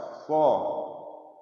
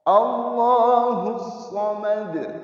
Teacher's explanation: So termasuk salah satu huruf yang memiliki sifat isti'la. Ketika mengucapkan huruf shad, pangkal lidah angkat ke atas.